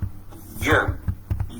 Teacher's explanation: Y is a palatal approximant, and this sound is almost present in all languages and all dialects of Pakistani languages.